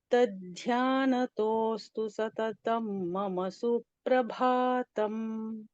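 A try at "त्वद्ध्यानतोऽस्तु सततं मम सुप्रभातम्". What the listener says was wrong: सिर्फ त्व है यहाँ पर, न कि त। त्वध्यान। यहाँ पर त्वत् है, यू नो Sanskrit, I नो। त्वत् ध्यानतः अस्तु, सो त्वत्।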